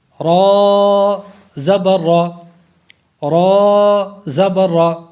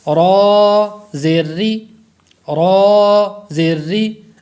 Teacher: را کو پر پڑھیں گے، را کے نیچے زیر ہو تو پھر را کو باریک پڑھیں گے